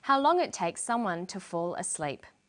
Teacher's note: for the very last item in the list, how long it takes someone to fall asleep. She uses falling intonation. This is how we know the list is finished.